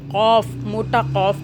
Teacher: موٹا قوف پڑھنا ہے، باریک کاف نہیں پڑھنا